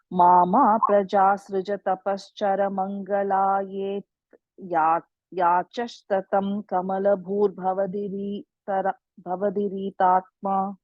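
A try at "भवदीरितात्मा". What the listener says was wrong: Maybe D is a long D, Re is a short Re. So Bhavadiri Tatma.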